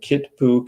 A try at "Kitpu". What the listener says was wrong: It's one of those languages where like the K makes a G sound. It's not the way that it's spelled. So it's Gitbu. So kind of like saying it as if it was spelled Gidboo. Gitbu.